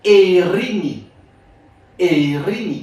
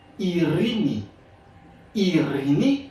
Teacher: il vient évoluer dans le grec moderne, il vient prononcer I dans le grec moderne